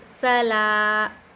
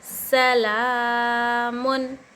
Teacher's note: लाम पर खड़ा ज़बर एक अलिफ के मकदार खींचना चाहिए।